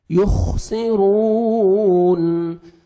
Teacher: پڑھیں گے، یخسی، سین پڑھیں گے، یخسرون، را کو مرپیش ہے، را کو موٹا بھی کرنا ہے اور 1 سیکنڈ کھینچنا بھی ہے